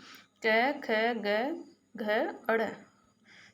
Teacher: स्पर्श व्यंजन होंगे हमारे, जिन व्यंजनों के उच्चारण में जीहा के मुख के किसी भाग का स्पर्श करती है, यानी जब हम इन वर्णों का उच्चारण करें तो हमारी जीभ है मुख के किसी न किसी भाग को स्पर्श करती है तथा वायु कुछ क्षण के लिए रुककर एक झटके के साथ बाहर निकलती है, उन्हें स्पर्श कहते हैं।